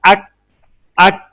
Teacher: Cough, pronounced as cough, using base of tongue touching the hard part of palates and make thin sound for cough